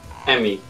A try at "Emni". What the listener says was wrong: Emni. No, there's an N. No, but there's an N in there.